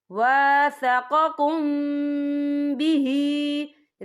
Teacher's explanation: وَاذْكُرُوا نِعْمَةَ اللَّهِ عَلَيْكُمْ وَمِيثَاقَهُ الَّذِي وَاثَقَكُم بِهِ، یا دیکھیں وَاثَقَكُم، یہاں میم ساکن ہے، میم ساکن کے بعد جو ہے با آ رہا ہے، تو یہاں پر اکفا شفی ہوگا اور ہم یہاں غنہ بھی کریں گے، اور غننے کی مقدار جو ہے 2 سے 3 سیکنڈ ہوگی